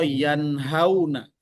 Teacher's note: Jadi ketika nun sukun itu diucapkan, walaupun dia tidak ditahan dengan dengung, dia pasti masuk ke khaysyum.